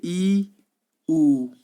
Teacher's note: सबसे कम मुंह खुलता है बड़ा ई और बड़ा ऊ में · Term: संवृत स्वर